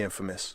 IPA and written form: ˈinfəməs (INFAMOUS)